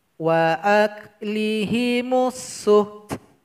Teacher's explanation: Jadi ada bunyi hamas dari huruf ta